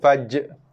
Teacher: So kita nak bunyikan makhraj dan juga sifat jim dulu. Faj, jim bila mati datang padanya sifat qalqalah, so lantunkan dulu faj